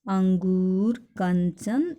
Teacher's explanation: अनुस्वार जो है वो स्वर के बाद आने वाला व्यंजन है, जिसकी ध्वनि नाक से निकलती है